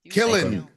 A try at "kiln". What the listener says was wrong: Kiln. You put extra letters in there. Kiln. Kiln.